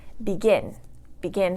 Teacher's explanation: Begin has 2 syllables, begin, and it's a verb, so the stress is going to go on the last syllable. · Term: stress on the last syllable